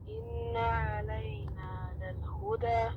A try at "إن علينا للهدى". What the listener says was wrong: Okay, the ayn is the issue right now. Say it again.